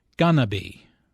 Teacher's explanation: Notice how this is pronounced like gonna be. Instead of 4 syllables, going to be, there are 3 syllables, gonna be.